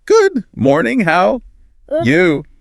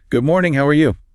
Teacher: When you say morning, your voice rises. It literally bounces up.